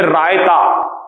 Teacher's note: जैसे आप बोलेंगे रायता, तो रायते में आप रा का उच्चारण जब करेंगे तो वो मूर्धन्य होगा, क्योंकि रा को आप पीछे से लेकर आएंगे